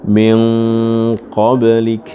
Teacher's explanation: ada ikhfa yang gunnahnya itu dibaca tebal, selebihnya tarkik, tipis. Disebut dengan tafkhimul gunnah itu.